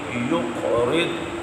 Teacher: پڑھیے یقرض، قاف حروف قلقلہ ہے تو یہاں پر ہم نے جماع قلقلہ کرنا ہے، قاف کو یا سے ملانا ہے اور یہاں ہم نے قلقلہ بھی کرنا ہے اور قاف کو پر بھی پڑھنا ہے۔ یقرض اور ضاد مستعلیہ ہے، اس کو پر بھی پڑھنا ہے۔